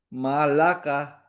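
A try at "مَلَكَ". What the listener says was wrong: Nah, kepanjangan ya, maknya ya. Ulang.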